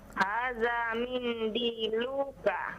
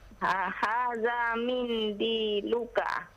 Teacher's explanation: Nah, lu-nya jangan dipanjangkan